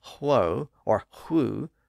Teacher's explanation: on the actual pronunciation since the pronunciation was who or who with the consonant sound of h on one side and the rounded vowel sound on the other side the W sound in the middle disappeared and that left the H sound at the front and gave